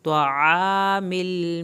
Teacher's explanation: आइन को हल्क से पढ़ें